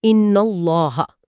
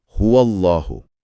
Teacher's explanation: یہاں اللہ سے پہلے نون پر زبر ہے تو لام بھاری ہوگا